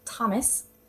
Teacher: And if you do a T, as in Thomas, there is absolutely no vibrations there.